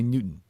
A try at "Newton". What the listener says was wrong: You have a hard T.